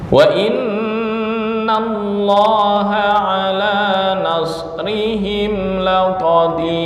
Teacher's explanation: Mim mati bertemu lam. Ini idhar syafawi.